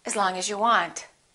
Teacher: the vowel in the preposition generally becomes the neutral sound